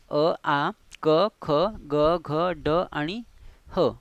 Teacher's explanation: कंठाला स्पर्श करून उच्चारल्या जाणाऱ्या वर्णांना कंठवर्ण म्हणतो आपण. म्हणजे ज्यांचा उच्चार कंठातून होतो, कंठाला स्पर्श करून आपण ज्या वर्णांचा उच्चार करतो ते म्हणजे कंठ्यवर्ण.